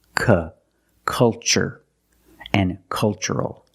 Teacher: the first syllable is a short u like cup and up uhuh make a relax sound C culture and cultural Let's test